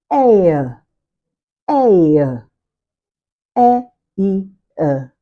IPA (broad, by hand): eɪə